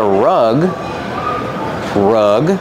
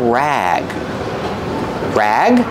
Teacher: rug has a short uh sound like cup and up